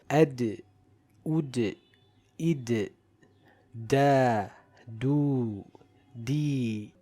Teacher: When we come to the letter Dal, we see that the attributes are very similar to the letters Ba and Jim. The sound and breath does not flow and it is a light letter recited with qalqalah in the sakin state.